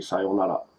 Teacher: R's are not pronounced as R's, are pronounced as L